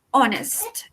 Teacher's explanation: La palabra honesto u honesta en inglés se dice honest. Esta H no suena. Es por eso que debo utilizar an, because this H is silent or voiceless. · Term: H muda